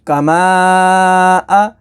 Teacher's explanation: حروف مدہ کے بعد حمزہ دوسرے کلمے میں ہے تو مد منفصل ہوگی، تو اسے 2 سے 4 الف تک کھینچ کر پڑھیں گے